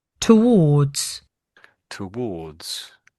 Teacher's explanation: They seem to be saying the R is pretty much silent, but it's these two letters together.